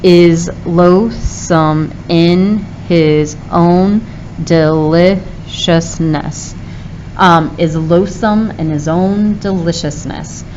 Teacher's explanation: unstressed stressed unstressed stressed unstressed stressed unstressed stressed unstressed stressed